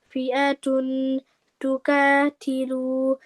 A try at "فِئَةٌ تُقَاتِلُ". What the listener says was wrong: का नहीं होता, कॉफ को मोटा पढ़ते हैं तो कौतिलू।